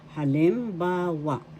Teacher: First syllable ha, second syllable lim, third syllable ba, fourth syllable wa. Halimbawa. The third syllable has the accent.